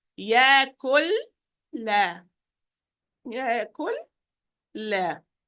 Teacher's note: So I'm going to say يَكُلْ. Yeah, I'm moving from the kaf with dhamma to the lam with sukoon, and then the lam with fatha.